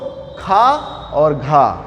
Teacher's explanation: देखो ज्यादा हवा निकल रही, तो क्या है, ये जो है महाप्राण हो जाएंगे